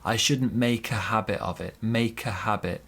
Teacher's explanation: Also here, a bit of linking. We link the K and the A and we say, I shouldn't make a habit of it.